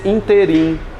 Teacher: Muita área jurídica quer pronunciar isso aqui nesse interim, fazendo uma paroxítona.